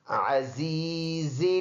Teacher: زا میں سیٹی والا آواز نکالیں گے